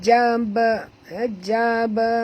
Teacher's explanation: ba mati di tengah-tengah kalimah, kena lantunkan dia.